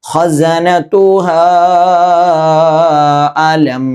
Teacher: അവിടെ മദ്ദിന്റെ അടയാളം വന്നതുകൊണ്ട് സാധാരണഗതിയിൽ നീട്ടുന്നതിനേക്കാൾ കുറച്ച് കൂടുതൽ, അഥവാ 2 അലിഫിന്റെ ഖദർ, അഥവാ 2 വിരൽ നിവർത്തി മടക്കുന്ന സമയം അവിടെ നീട്ടണം.